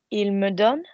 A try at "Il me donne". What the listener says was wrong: Nice.